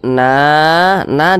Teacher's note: kemudian na na dibaca panjang ini namanya Mad Jaiz munfasil